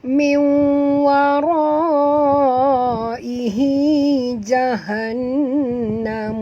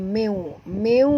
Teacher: min nun mati bertemu waw, kita kena masukkan bunyi nun ke dalam waw, idgham ma'al gunnah. Ya, bacaannya bukan min ya, tapi bunyi dia meu.